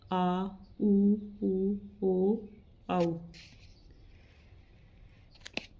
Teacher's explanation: जीभ का पिछला भाग सक्रिय रहता है वे पश्च स्वर कहलाते हैं